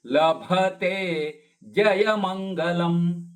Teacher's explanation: ಲಭ ಮಹಾಪ್ರಾಣದ ಭ ತೇ ದೀರ್ಘ